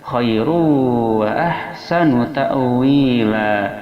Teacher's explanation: Khairu ada tanwin dhammah bertemu dengan waw, hukumnya adalah idgham ma'al gunnah, memasukkan tanwin dhammah ke dalam waw disertai dengan dengungan pada hidung 2 harakat